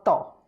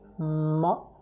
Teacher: Ta is dental, ma is labial, see, lips are closed, ma, and ta, you have to touch the frontal two teeth, almost four, with the tip of the tongue, ta, ta, ta, ta, ta.